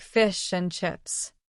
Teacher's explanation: In fish and chips, the D in and often disappears. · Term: Elision